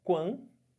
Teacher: Eu fiquei com o som de duas vogais, do A com o U. Só que esse A, vocês estão vendo que ele está nasalizado, né? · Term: ditongo nasal